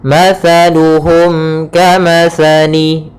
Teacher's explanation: Kemudian di sini ada mim mati bertemu dengan huruf kaf, maka kita namakan dengan izhar syafawi. Izhar syafawi, yaitu suara mimnya harus jelas dan tidak boleh ditahan.